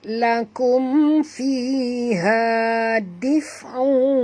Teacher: Tanwin bertemu dengan waw, masuk dan dengung, idgham ma'al gunnah.